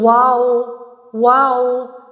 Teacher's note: واؤ ہونٹوں کے گول ناتمام ملنے سے ادا ہوتی ہے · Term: واؤ کا مخرج